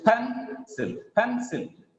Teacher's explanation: The stress is on first syllable